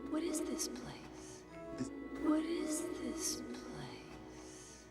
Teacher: the T sound from what is followed by the vowel sound and is turned into a du sound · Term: connected speech